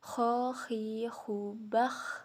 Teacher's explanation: dikeluarkan dari tenggorokan yang dekat dengan rongga mulut ciri khasnya itu seperti orang mendengkur